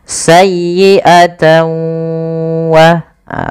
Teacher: Karena dia bertemu dengan wau, huruf n-nya itu diganti diganti dengan wau. Maka sayyiata langkah kedua ditahan dengan gunahnya. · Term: idgham